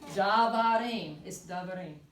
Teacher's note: Just know that the first vowel is reduced.